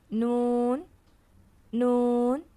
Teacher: نون کے لیے زبان کے اگلے حصے کو اوپر کے 6 دانتوں کے مسوڑوں کے ساتھ لگا کر ادا کریں گے. نون، نون.